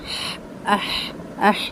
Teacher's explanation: ہا کو حلق سے نکالا جائے گا، درمیانے حلق سے، اور اس میں ہمس کا ساؤنڈ، اح، اح، یعنی تھوڑی سی آواز اس کی آپ کو ہوا اس میں سے باہر نکلتی محسوس ہوگی، اح، اح، اوہ۔